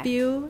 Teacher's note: Spew, we cannot drop that y sound. We can't say spoo.